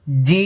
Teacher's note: ঠোট বন্ধ হবে কারণ এটার শেষে মিম আছে